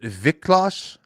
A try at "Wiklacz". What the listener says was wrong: The L does not get pronounced.